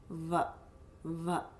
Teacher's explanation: And you can feel the teeth, v, coming from the lips and sort of vibrating